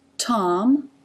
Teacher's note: you see the tongue tip up behind the closed teeth, releasing into the a as in father. Lips closed for the m.